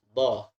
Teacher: Do ini berbeda. Dia lidahnya bertemu gigi geraham. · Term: huruf do